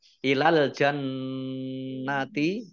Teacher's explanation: Nun tasdid dibaca double dan mendengung, ditahan 2 harokat